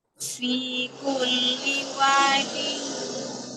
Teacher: Pertama, dengung itu 3 harokat minimal. Tadi baru 2. Yang kedua harus masuk hidung. Tadi belum masuk hidung.